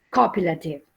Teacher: Remember that the stress is on the first syllable.